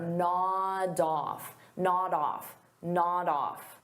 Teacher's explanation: Nod off is a phrasal verb, so we'll pronounce it as one word, nod off. So notice I'll take that D sound and I'll connect it on the off, but I have to combine it together.